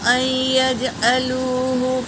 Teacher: نون پر سکون ہے مگر یا پر تشدید ہے تو ہم حمزہ کو یا میں ملائیں گے، نون کو نہیں پڑھیں گے۔ یا کو 2 بار پڑھیں گے، جیم پر سکون ہے تو پہلے والے حرف سے ملا کر پڑھیں گے۔